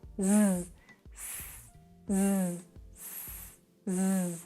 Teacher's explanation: pour bien prononcer le Z avec les cordes vocales qui vibre